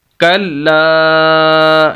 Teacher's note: یہ الف مدہ ہے اس وجہ سے لام کو لمبا بھی کریں گے